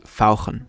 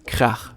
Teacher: German has the special ach sound, which sounds very throaty. It can be heard in the German words fauchen, which means to hiss, or krach, which means noise.